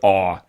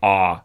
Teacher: there is kind of a general shift in Canadian English where you might have this vowel in American English, ah, and in Canadian English, it's rounded a little bit. So it goes to, the symbol used is kind of, you can even think of it as an upside down.